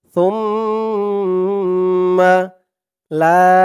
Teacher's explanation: সা দিয়ে এই তাসদিদ ওয়ালা মিম ধরবে, এখানে ওয়াজিব গুন্না হবে।